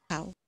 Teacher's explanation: ao that starts lower and moves up toward o